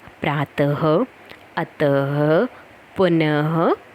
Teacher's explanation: विसर्ग का उच्चारण ह की तरह होता है।